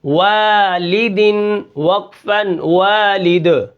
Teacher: اس کے بعد جو ہمارا کلمہ ہے وہ ہے واو الف زبر وا، لام زیر لی، والی، دال دو زیر دن، والد وقفن والد، ٹھیک ہے. دال کو قلقلہ کریں گے، وقف بالاسکان ہوگا، اور بیچ میں جو الف ہے یہ الف مدہ ہے، ٹھیک ہے.